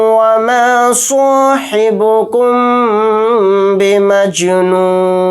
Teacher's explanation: स्वाद को यहाँ पर मोटा यानी पुर पढ़ेंगे